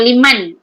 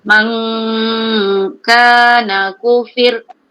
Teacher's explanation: Non tu jangan dijelaskan. Tu kena disembunyikan, disamarkan. Cenderung kepada kaf. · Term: Non mati bekaf